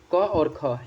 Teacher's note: क और ख यह जो है यह कंठ ध्वनि है